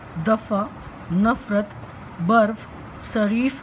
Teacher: इसके उच्चारण में होठ दांत को पूरी तरह स्पर्श नहीं करते, बल्कि कुछ इस तरह से हल्का सा स्पर्श करते हैं ताकि हवा घर्षण खाती हुई बाहर निकले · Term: दंत ओष्ठ्य ध्वनि